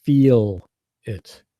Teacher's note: the correct way in North American English is to hit that e sound and to stretch it